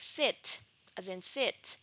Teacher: the tip of the tongue approaches the alveolar ridge, but it doesn't touch it